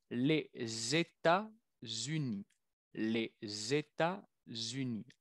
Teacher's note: Cuando el país es plural, como en español, los Estados Unidos, decimos le y tenemos una doble liaison